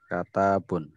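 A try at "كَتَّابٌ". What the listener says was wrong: Nah, tasdid kat. Nah, katabun.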